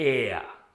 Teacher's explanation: it's not just air it's air with a little bit of aspiration in the end